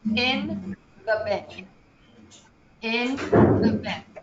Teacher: we have this very short very quick i sound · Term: short eye sound